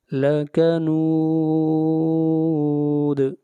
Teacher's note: یہاں پر 3 الف کے برابر مد کریں گے، اس مد کو مد عارض وقفی کہتے ہیں